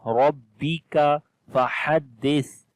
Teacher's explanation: On the ra we read heavy sound, there is fatha on the ra. And kaf we read in light sound.